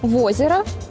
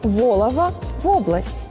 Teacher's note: Калі на пачатку слова стаіць націскны о, перад ім звычайна развіваецца прыстаўны в